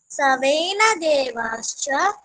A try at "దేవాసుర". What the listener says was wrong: దేవాశ్చ కాదు తను తప్పు పలికాడు అదే పలికావు నువ్వు కూడా. దేవాసుర అన్న దేవాసుర